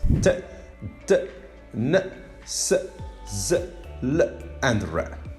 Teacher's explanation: In fact, in the production of these 7 sounds, what happened is that the air is blocked by raising the tongue to the alveolar ridge. So that's why we call these sounds alveolars.